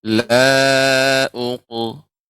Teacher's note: karena qaf ini termasuk huruf isti'la juga, jadi tebal.